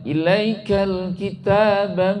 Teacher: Ilaikal itu alif lam komariah, lamnya dibaca jelas. Ya, L-nya kedengaran lamnya.